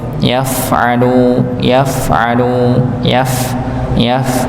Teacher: Sekali lagi pada huruf ee fa ini dia dibaca ee dialirkan nggih.